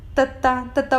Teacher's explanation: ਦੰਦਾਂ ਨਾਲ ਜੀਭ ਛਾਉਂਦੀ ਹੈ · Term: ਦੰਤੀ